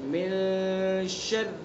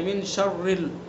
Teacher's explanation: یعنی ناک کے باسے سے ادا کریں گے ایک الف کے برابر، من شر، شر کی را کو باریک پڑھیں گے، شرل نہیں پڑھیں گے اس کو